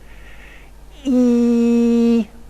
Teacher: hence we can define for extremes now first of all there's a vowel that involves the highest possible tongue position in the mouth and the most front quality